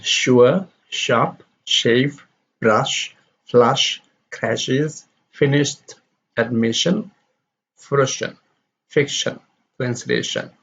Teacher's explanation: sure is a voiceless consonant we don't have the vibration of the vocal cords and during the production of sure the lips are rounded so · produced by raising the middle of the term against the palate the movement of the tongue is not followed by the vibration of the vocal chords sure is a voiceless consonant we don't have the vibration of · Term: voiceless palatal fricative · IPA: ʃ